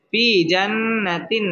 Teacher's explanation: তানবিনের বামে আইন আসছে আইন ইজহারের হরফ এখানে গুন্নাহ ছাড়া স্পষ্ট করে পড়তে হবে